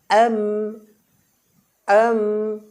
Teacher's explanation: মিমের মাখরাজ হলো দুই ঠোঁটের একেবারে এই শুকনো অংশ একেবারে এমন নয় এমন নয় হালকা পরিমাণে আমরা এই শুকনো অংশের · হালকা পরিমাণে আমরা এই শুকনো অংশের সাথে লাগিয়ে আমরা উচ্চারণ করব ঠোঁটটা লাগান লাগিয়ে নাকের বাঁশি থেকে আমরা মিম বর্ণটি উচ্চারণ করব নাকের বাঁশি থেকে আম হামজা মিম জবর